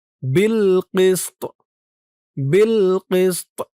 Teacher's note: বিল কিস্ত বিল কিস্ত এই তর নিচে এই জেরটা সাকিন হয়ে যাবে। সাকিন হওয়ার পরে এই তোয়া কিন্তু কলকলার হরফ হয়ে যাবে, লাস্টে একটু ধাক্কা খাবে।